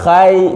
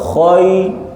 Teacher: bibir jangan buka khai, tidak khai, khoi, tebal khoi.